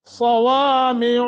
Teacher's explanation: صاد موٹا، واو کو بھی موٹا کریں گے، لمبا بھی کریں گے ، کھڑی زبر ہے، اور پھر عین،